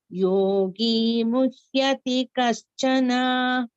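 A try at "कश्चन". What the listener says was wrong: Kaschana. Don't elongate it. It's Raswa.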